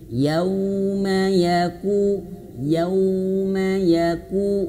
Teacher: Yang pertama di ayat keempat ini, yauma, nah, ini harus dimoncongkan ya, yauma, karena huruf waw itu makhrajnya 2 bibir yang dimoncongkan, dimanyunkan